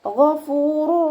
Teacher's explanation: ഗൈനിൻ്റെ sound അദ്നൽ ഹൽക്കിൽ നിന്നും തന്നെ കൊണ്ടുവരാം, നമ്മുടെ തൊണ്ടയുടെ ആദ്യ ഭാഗത്തു നിന്ന് തന്നെ കൊണ്ടുവരാൻ ശ്രദ്ധിക്കുക. ഗ എന്നുള്ള സൗണ്ട് കൊടുക്കുക കേട്ടോ.